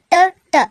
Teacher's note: ಟ ಟ ನೋಡಿ ಇವುಗಳ ಉಚ್ಚಾರ ಮಾಡ್ತಾ ನಾವು ಹೇಗೆ ಉಚ್ಚಾರ ಮಾಡ್ತೀವಿ, ನಾಲ್ಗೆನ ಹಿಂದಕ್ಕೆ ಚಾಚಿ ಉಚ್ಚಾರ ಮಾಡ್ತೀವಿ. ಅದಕ್ಕೋಸ್ಕರ ಇವನ್ನ ನಾವು ಮೂರ್ಧನ್ಯ ಅಂತ ಕರಿತೀವಿ.